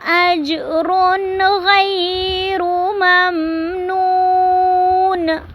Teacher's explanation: اج پہ جیم پہ کلکلا ہو رہا ہے